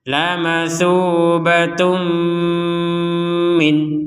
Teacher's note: tanwinnya dimasukkan kepada huruf mim menjadi laubatum Min dimasukkan kemudian didengungkan